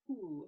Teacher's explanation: I'm going to start off with a very breathy and unvoiced whoo. So I'm stretching that out.